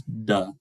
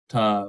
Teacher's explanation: with just the contrast being the glottal pulsing associated with the voice sound that is not associated with the voiceless sound, so voicing.